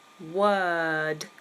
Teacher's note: Word. No pronouncing of the R.